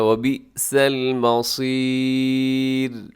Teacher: لیکن صاد موٹا رکھیے گا